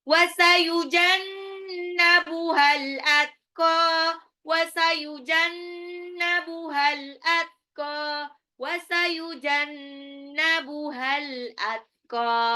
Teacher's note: Wasayujannabuha itu nunnya tasdid, jadi bacanya gunnah. Al-atqa alif lam qamariyah.